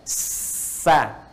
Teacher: Kalau yang tadi mendekat, mau nempel, ini ke bawah. Jadi, ketika dia bunyinya ke bawah, tidak muncul seperti o lagi. Tapi netral, jadi a. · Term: istifal